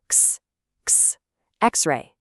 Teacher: it mashes a K and an S sound together.